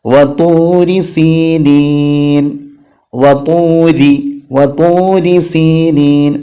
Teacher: റാഇന് കസ്റാണെങ്കിൽ തർക്കീക്കാക്കണം. രി എന്നുള്ള ശബ്ദത്തിലാണ് ഉച്ചരിക്കേണ്ടത്.